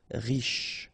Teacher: Final not really pronounced, so sh is the last sound.